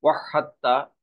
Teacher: এখানে একটি কথা আপনাদেরকে স্মরণ করিয়ে দিতে চাই, সেটা হলো এই যে দাল আর তা এর একই মাখরাজ, এই কারণে এই হা যে সরাসরি তাকে ধরবে, এই জন্য তায়ের উপরে তাসদিদ দিয়ে উচ্চারণ করতে হবে। দালটা লেখায় থাকবে কিন্তু উচ্চারণে আসবে না।